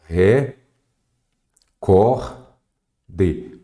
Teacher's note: Qual é a sílaba tônica é o cor · a sílaba tônica é a penúltima